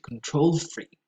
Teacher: as in control freak, the stress goes on the second syllable.